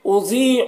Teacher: ضاد کو پر پڑھنا ہے، یہ حروف مستعلیہ میں سے ہے، اور یہاں پر یا مدہ ہے، اسے ایک الف کے برابر کھینچ کر پڑھیں گے۔